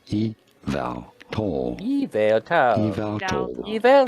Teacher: You do want to stress on the second syllable, on the vowel syllable.